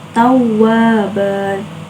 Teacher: Cara membacanya tanwin dihilangkan dan dibaca panjang 2 harokat. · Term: mad iwad